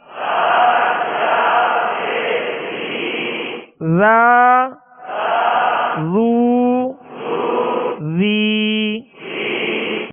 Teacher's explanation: ذال کو نرمی کے ساتھ پڑھنا ہے، اس میں سختی سیٹی کی آواز پیدا نہ ہو، نرمی کے ساتھ ادا کرنا ہے.